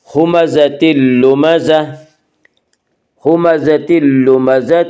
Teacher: اس کا قاعدہ ہے کہ نون ساکن اور تنوین کے بعد اگر حروف یرملون میں سے کوئی حرف آئے تو ادغام ہوگا، لام و را میں ادغام بلا غنہ ہوگا، اور یہاں تنوین کے بعد لام اور اس میں ادغام بلا غنہ ہوگا